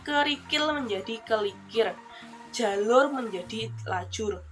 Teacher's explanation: pertukaran dua atau lebih segmen atau suku kata yang berdekatan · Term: metatesis